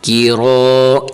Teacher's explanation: نہ بنے۔ کیف زیر کی، رو الف زبر رو، کی رو، اس کیف کو باریک کریں گے اور حرف را کو موٹا کریں گے